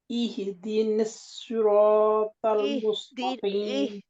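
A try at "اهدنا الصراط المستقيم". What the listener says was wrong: اہدنا الصراط، نہیں ہی نہیں ہے نا میری بہن، اتنا ظلم نہ کریں، ہا کے اوپر، ہا کے نیچے زیر نہیں ہے، ہا کے اوپر جزم ہے، پہلے کہے دی ہی نہیں نا، کیونکہ جب آپ ہی کر لیتے ہیں تو کیا ہوتا ہے، ہا کے نیچے آٹومیٹکلی جلدی سے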